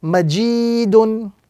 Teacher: with the prolongation or the emphasis on the second letter because of the ya madda